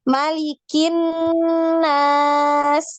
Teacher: huruf nun yang ada tasdid ini dipanjangkan ya, digunnah ya. Malikin nas, ditahan seperti itu ya, dipanjangkan.